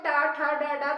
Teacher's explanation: तो हमारी जिह्वा मुड़कर ऊपर हमारे मुंह की छत पर लगती है, जो मूर्धन्य कहलाती है।